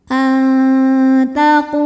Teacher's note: nun dibunyikan samar-samar, siap-siap menuju ta disertai dengung. Ee ujung tepi lidah, ujung lidah kita siap-siap mau ke pangkal gigi seri. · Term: ikhfa aqrab